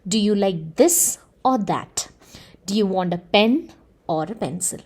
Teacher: when we are trying to point out the difference between one object and the other we will have to stress those two words · I'm giving two options over here and I wish to stress those two options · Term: contrast to stress